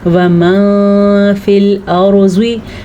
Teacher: وَمَن، بعض لوگ پڑھتے وَما، ایسا نہیں ہے کہ آپ نون کو بالکل ہی غائب کر دیں، کسی حد تک نون کو چھپانا ہے اور غنّے کی کیفیت پیدا کر کے اخفاء ادا کرنا ہے